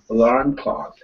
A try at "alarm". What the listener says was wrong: Yeah, so it's not actually your intonation that was wrong. Your intonation was fine. It was where you're putting the emphasis on the word alarm. The emphasis comes on the second syllable, alarm. Not alarm, alarm.